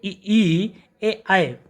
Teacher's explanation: जिन स्वरों के उच्चारण में जिह्वा का अग्रभाग सक्रिय रहता है उन्हें अग्र स्वर कहते हैं